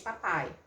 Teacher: Então, esse P, ele é um som oclusivo, por quê? Porque eu tenho momentaneamente um encontro dos meus lábios que obstrui completamente, que fecha completamente a minha cavidade oral